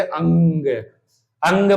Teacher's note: अनुनासिक स्वर अनुनासिक जैसे अंग अंग बोलो आ पर बिंदी है तो अंग देखना मुंह और साथ में नाक पे भी जोर पड़ेगा नाक से भी हवा निकलेगी